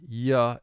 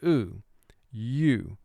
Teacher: the first long sound of the letter u is u which really it consists of two sounds the y sound ya and the o o sound oo